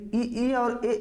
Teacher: जो जीभ का अगला भाग होता है वहां से जो ध्वनियां उच्चारित होती हैं उनको अग्र स्वर के नाम से जाना जाता है